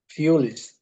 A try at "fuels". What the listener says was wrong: Fuel. Fuels. So fuels. Fuel. Not fool, because I heard you saying fool. This is fool, and this is fuel.